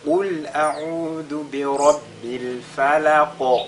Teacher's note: Si on fait bi rabbil falaq, là, la lettre qaf, n'est-ce pas, a cette autre caractéristique qui est at-tafkhim. Donc ici, pendant qu'on fait al-qalqala, on ressort également, on met l'accent sur son caractère emphatique.